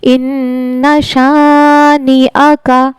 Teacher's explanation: हमजा की आवाज जो है वो हलक के सीने की तरफ वाले हिस्से से अदा होती है।